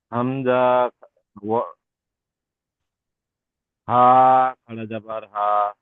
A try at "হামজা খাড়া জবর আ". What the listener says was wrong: আরো টান দেন, টান দিয়ে দিয়ে বলেন এটা। যে হামজা খাড়া জবর, এই তো এখানে আলিফটাও হামজা বললাম, হামজা খাড়া জবর বলেন। হামজা খাড়া জবর আ বলেন।